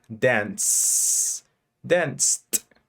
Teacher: If before the ed there's an unvoiced sound, add the t sound. Si antes del ed hay un sonido que no es vocalizado, que no vibra, le agregas el sonido de t, la t.